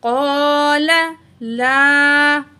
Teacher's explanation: قاف کو موٹا پڑھیں گے، الف کو کھینچ کے پڑھیں گے، ایک الف کے برابر، الف مد ہے. قال لا، الف سے پہلے زبر ہے، الف مد ہے، یہاں بھی ہم ایک الف کے برابر کھینچ کے پڑھیں گے.